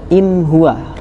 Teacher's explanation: Ketika ada nun mati ketemu ha, maka dia menjadi huruf yang jelas, idhar tanpa mendengung, tanpa gremeng kalau bahasa Jawanya.